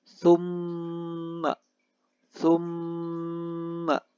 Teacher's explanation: Lalu di ayat ke-40 Di ayat ke-41 terdapat kata summa, summa. Ada mim tasydid. Hukum bacaannya gunnah. Dibaca secara mendengung. Membacanya perlu waktu beberapa saat dan jangan terburu-buru.